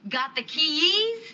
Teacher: Got the keys, right? With rising intonation. And again, you would only apply rising intonation when you're asking for a repetition, when you're indicating a disbelief, or when you're asking closed-ended questions.